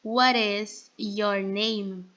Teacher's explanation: Quando a gente pronuncia na forma completa, sem a contração, a gente pronuncia What is your name? A gente pronuncia What is como se tivesse ali um R · A gente pronuncia What is como se tivesse ali um R, né? O que vai acontecer aqui?